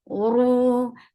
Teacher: And ain should be from your throat nicely. Uru, lift your tongue up to make ra heavy. Whenever ra is with damma, ra is heavy.